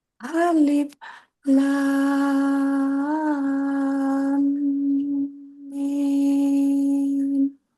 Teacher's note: merapatkan kedua bibir dulu agak lama. Minimal satu ayunan atau 1 seteng ayunan karena ada mim bertasdid di situ.